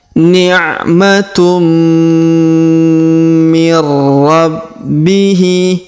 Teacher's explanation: Tanwin un bertemu mim bertasdid, maka tanwin unnya masuk ke huruf mim, melebur ke sini, kemudian kita tahan dan kita dengungkan 2 sampai 3 harokat.